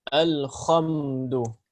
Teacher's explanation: Ya, seperti contohnya ingin dia berusaha mengucapkan huruf ha dengan benar, ha cuma tidak mengeluarkannya dari tengah tenggorokan. Ya, mengeluarkannya dari tenggorokan atas ya ataupun dekat ke tenggorokan atas sehingga yang keluar adalah huruf kha